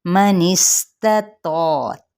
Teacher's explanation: من استطاع، منس نون کی زیر کو سین کے ساتھ، اور پہلا ہے تا باریک اور دوسرا ہے تو پر، لیکن یہ الف مدہ کے ساتھ ہے اور الف بھی پر ہو جائے گا، یعنی تفخیم کے ساتھ پڑھیں گے.